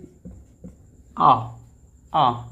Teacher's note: यह हमारे जीभ के मध्य भाग से बोला जाता है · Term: मध्य स्वर